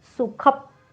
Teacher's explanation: पचा उच्चार करताना ना ओठ बंद करून घ्या, कारण प हा ओष्ठ्यवर्ण आहे.